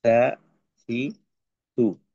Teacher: জিহ্বাটাকে একটু বের করে দাঁতের আগার সঙ্গে লাগায় তারপর আলতো ভাবে সা, সি, সু হবে।